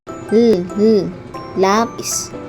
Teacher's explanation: Sa paraan ng artikulasyon, ito ay paggilid na may tinig.